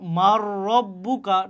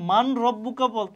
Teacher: কারণ কি এটা হচ্ছে ইদগামের হরফ নুন সাকিনের পরে র আসছে এজন্য আমরা এই নুন কে বাদ দিয়ে আমরা কি করতেছি র কে র সাথে মিলিয়ে পড়তেছি